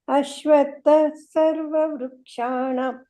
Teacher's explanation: ಮಧ್ಯ ಇರೋದು ವಿಸರ್ಗನ ಫುಲ್ ಹೇಳಬಾರದು